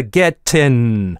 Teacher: ing-овые окончания частенько во многих акцентах английского превращаются в in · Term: g-droping